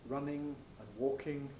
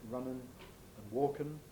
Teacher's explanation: you get an alveolar nasal for the ing